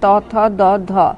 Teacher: জিভের ডগা ওপরের পাটির দাঁতে ঠেকিয়ে কিংবা দাঁতের গোড়ায় ঠেকিয়ে ধ্বনি উচ্চারণ করা হয়। জিভের ডগা দাঁতে ঠেকানোর ফলে উচ্চারিত ধ্বনি হলো দন্তধ্বনি